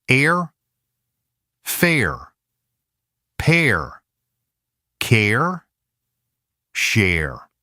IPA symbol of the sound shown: er